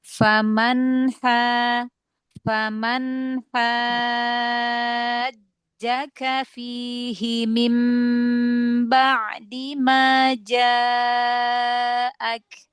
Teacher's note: nun yang sukun idhar ya, idhar halki, nun ketemu ha. Jangan ngerem nunnya ya